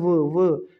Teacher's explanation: जो व का अगर आप उच्चारण करोगे तो आपके जो दांत हैं और होठ हैं वे एक दूसरे को टच करते हैं, स्पर्श करते हैं। वो आप एक बार आप उच्चारण करके देखिए व, तो व में दोस्तों दांत और होठ हैं जो उनका आपस में क्या होता है, स्पर्श होता है। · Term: दंतोष्ठ व्यंजन